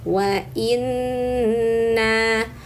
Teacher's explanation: nun bertasydid maka tahan dan dengungkan tiga harakat namanya ghunah musyaddadah ghunah itu artinya dengung teman-teman ya jadi ada bunyi dari rongga hidung yang didengungkan itu n-nya ya atau Nnya wa inna.